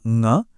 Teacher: इनकी खासियत है इनकी नासिक की ध्वनि, मतलब इनकी आवाज नाक से निकलती है। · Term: पंचमाक्षर